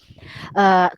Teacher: Ru, kita punya kedudukan lidah kita tu sedikit terangkat. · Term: roh dibaca tebal